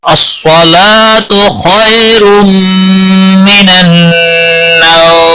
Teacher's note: صاد حروف مستعلیہ میں سے ہے، موٹا پڑھا جائے گا. لام کے اوپر کھڑی زبر ہے، ایک الف کے برابر کھینچ کر پڑھیں گے.